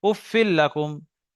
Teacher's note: তানবিনের পরে লাম এসছে, তানবিনকে লামের সঙ্গে মিলিয়ে বিনা গুণনায় পড়তে হবে।